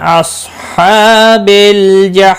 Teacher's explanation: جحی یا مدہ ہے، 1 الف کے برابر کھینچ کر پڑھیں گے. اور وقف کی صورت میں میم ساکن پڑھا جائے گا، وقف بالاسکان ہوگا، مد العارض وقفی ہوگا، 3 سے 5 الف کے برابر کھینچ کر پڑھیں گے